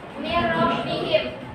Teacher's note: Bilaguna itu tanpa dengung, dibacanya langsung ke huruf selanjutnya. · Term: Idgham bilaguna